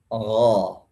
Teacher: Hanya terangkatnya pangkal lidah ke pangkal langit-langit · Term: istilla